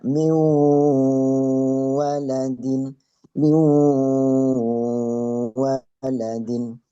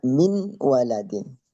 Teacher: Ke huruf wawunya di belakang. Jadi seakan-akan bunyi nunnya tersebut menjadi hilang. Tapi dirubah dengan dengungnya.